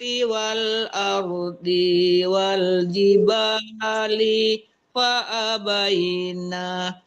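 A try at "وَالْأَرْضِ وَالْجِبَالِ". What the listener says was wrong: Ardi tidak boleh panjang, masih tertahan di wal ardi wal itu nggak boleh panjang, kan nggak ada tanda panjang didinya.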